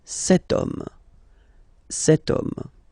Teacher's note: H is not pronounced, so the first sound that we hear is O